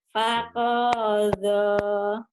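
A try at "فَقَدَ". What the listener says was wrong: Bukan. Koknya pendek. Panya pendek. Faqadha.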